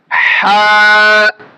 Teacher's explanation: আমাদের হা হরফটি উচ্চারণ হবে হলকের মাঝখান থেকে, অর্থাৎ এখান থেকে।